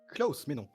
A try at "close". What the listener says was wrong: Nein, il a prononcé comme Klaus. Ce n'est pas la même chose. La prononciation était un peu allemande, si je peux me permettre.